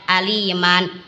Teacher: Apabila mat iwad terjadi karena waqaf pada fathatain dibaca panjang 2 harokat.